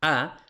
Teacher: en la A la lengua no sube, la lengua está bastante plana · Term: la vocal baja